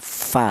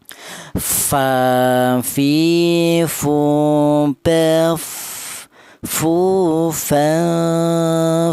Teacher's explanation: bibir bawah yang bagian dalam kemudian menyentuh ujung gigi seri bagian atas